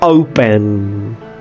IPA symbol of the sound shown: oʊ